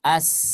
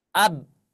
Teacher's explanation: ketika kita mengucapkan huruf misalkan yang ada hamasnya, huruf sin, as, ada suara nafas di sana.